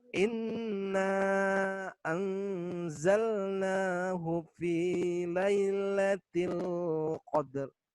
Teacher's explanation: Di sini ro-nya sukun karena sebab waqaf ya, dibacanya dengan tebal ya.